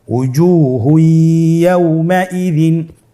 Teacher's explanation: তানবিনকে পরবর্তী হরফের সাথে মিলিয়ে গুন্নার সহিত পড়তে হবে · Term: ইদগামে বাগুন্নার